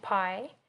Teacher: With the pie, we have extra breath while pronouncing it. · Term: aspiration